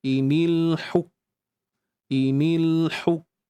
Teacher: Bagi suara kita ni tertahan. Dia macam stop tiba-tiba kan. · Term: sifat syiddahnya